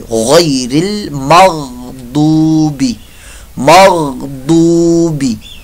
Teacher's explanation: गईन हलक के ऊपर वाले हिस्से से अदा होता है और हुर्फ मुस्तालिया में से है , इसकी आवाज़ भी प्रमोटी है, गैरिल मग़दूबी मग़दूबी